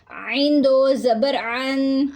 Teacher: عین جو ہے وہ وسط حلق سے ادا ہوگا، حلق کے درمیان والے حصے سے